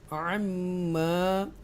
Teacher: Extra stress के साथ गुन्ना करेंगे मीम के ऊपर और ये मद मुत्तसिल है.